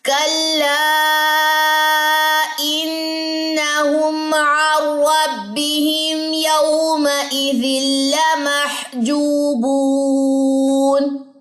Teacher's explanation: واو مد نون کی زبر وقف کی صورت میں ڈراپ ہو جائے گی، پڑھی نہیں جائے گی